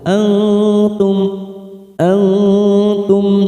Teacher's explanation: nun sukun bertemu ta ikhfa aqrob samarkan tiga ketuk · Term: ikhfa aqrab